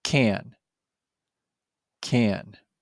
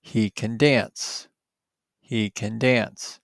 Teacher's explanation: When can comes before another word in a sentence, the vowel has a short, weak sound.